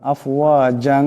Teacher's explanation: ইকফার এক আলিফ পরিমাণ গুন্না হবে